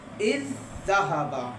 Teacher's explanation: وہ ایک زا کو دوسرے میں ہم نے ضم کر دیا